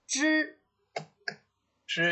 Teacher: 哎 ，When you pronounce this one 啊 ，turn up your tongue tip